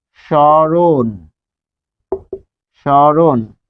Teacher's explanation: শব্দের আদিতে মফলা যুক্ত হলে সাধারণত অনুচ্চারিত থাকে · আর যেহেতু ম বসেছে তাই সেটি মত নাসিক্য বর্ণ এখানে চন্দ্রবিন্দু এখানে যে নাসিক্য চিহ্ন বোঝানোর জন্য এটি দিচ্ছি এবার আসুন রছে র কারণ র এর সাথে কি রয়েছে র হসন্ত যোগ অ মাঝখানে রয়েছে অ মাঝখানে থাকার কারণে এখানে হয়েছে ও